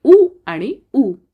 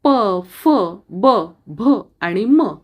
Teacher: औष्ठ्य ओठांचा उपयोग करून उच्चार होणारे स्वर आहेत उ आणि उ. तसेच प, फ, ब, भ आणि म ही व्यंजने आहेत.